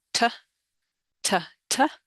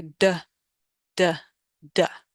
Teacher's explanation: when you pronounce T, there's no vibration going on, T. When you pronounce D, D, you're feeling a vibration in your throat. And that's the only difference between those two sounds, and that makes a distinction between them.